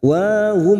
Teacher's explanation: Najwahum, wa alif kecil di atas 2 harakat. Wa hum mim sukun bertemu hamzah idhar safawi, mim sukun dibaca jelas tanpa mendengung